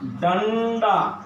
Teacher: डंडा में आधा टवर्गी ण होगा क्योंकि आगे ड है। तो ड होने से ट ठ ड ढ ण, उसके पांचवा के उच्चारण का आदेश अनुस्वार के लिए हो जाता है।